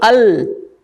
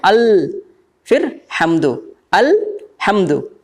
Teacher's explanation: लाम को पूरा नहीं बोल रहे, थोड़ा बोल के रुक जा रहे हैं, देखिए आधा बोल रहे हैं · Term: सुकून